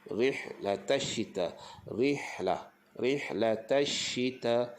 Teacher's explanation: Shin tu bagi dia berhamburan udara.